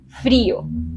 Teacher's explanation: En frío, la vocal I recibe la fuerza. Frío. Por lo tanto, la tengo que acentuar, porque la vocal I con la vocal O normalmente forman un diptongo, pero como la vocal I tiene fuerza, se separan.